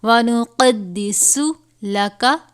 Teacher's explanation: وَنَحْنُ نُسَبِّحُ بِحَمْدِكَ وَنُقَدِّسُ، سین ہے حروف صفریہ میں سے، اس کا یہ خاص خیال رکھنا ہے کہ سین کی آواز صاد سے ملتی جلتی نہیں ہونی چاہیے، یعنی سین اور صاد میں فرق ہونا چاہیے، سین کی آواز سیٹی کی طرح نکلتی ہے